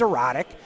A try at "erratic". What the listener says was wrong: Did you say erotic? Erratic. sounded like you said erotic.